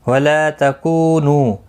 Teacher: لا الف مدہ ہے، کو واو مدہ ہے، نو واو مدہ ہے، تینوں کو ایک ایک الف کی مقدار کے برابر کھینچ کر پڑھیں گے